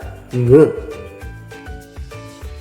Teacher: Ang ponemang ito ay may tunog na ng. Ang velum o ang malambot na bahagi ng ating ngalangala ay dinidikitan ng ibabaw ng ating punong dila